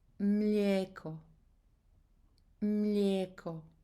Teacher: the trick here is to skip I and pronounce Croatian E just a slightly longer.